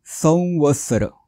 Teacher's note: इथे व आलाय म्हणून इथे अनुनासिक व चा वापर करायचा आहे